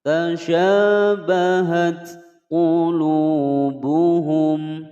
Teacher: Tasyabahat qulubuhum. Tasya panjang dua ketukan mad tabi'i ada alif sebelumnya fathah. Tasyabahat ada ta taknis sakinah ya, huruf ta menyandang harokat sukun ada bunyi hamas.